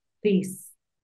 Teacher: la th es como como una d, como una z, no es tan fuerte como una t porque es un sonido dental